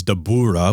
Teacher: with the emphasis on the ooh